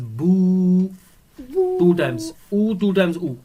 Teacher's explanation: this wow is not giving w sound it's acting as a vowel because it has a schoon on it and the preceding letter